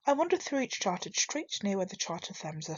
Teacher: it's a rhythm of four pairs of stressed and unstressed syllables. This creates a plodding, almost monotonous rhythm, which matches the suffering and misery Blake describes in the city. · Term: iambic tetrameter